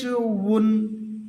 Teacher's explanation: দুই ঠোঁট গুল করে মুখের খালি অংশ থেকে গুল করে উচ্চারণ হবে